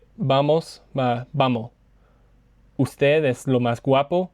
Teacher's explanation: la s no tiene sonido, no tiene valor fonético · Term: se come la s